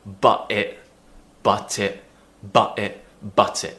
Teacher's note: we have to pronounce that t or we drop it with a glottal sound